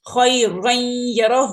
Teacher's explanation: یہ نون ساکن یا تنوین کے آگے جب بھی یرملون 6 لیٹرز یا را میم لام واو نون ان میں سے کوئی لیٹر آتا ہے تو وہاں پر ہم ادغام کرتے ہیں۔ اب ان یرملون میں سے یا آ گیا ہے تو اب یہاں پر ادغام کر رہے ہیں، غنہ کے ساتھ ادغام کر رہے ہیں۔